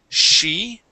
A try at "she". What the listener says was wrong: Excuse me, you were pronouncing the CH sound, saying chi. she.